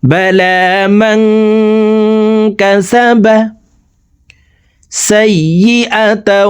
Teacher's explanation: এই নুন সাকিনকে নাকের ভিতরে লুকাইয়া গুন্নার সহিত পড়ব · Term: ইকফা গুন্না